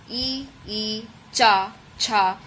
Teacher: ई, चा, छा, ये जैसे होता है तो ये तालु से लगाकर बोलते हैं, तो ये तालव्य की श्रेणी में आता है